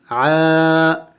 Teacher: عین کے اوپر کڑی زبر ہے تو کڑی زبر کو ایک الف کے مقدار لمبا کرنا ہوتا ہے، ایک الف کے مقدار کھینچنا ہوتا ہے.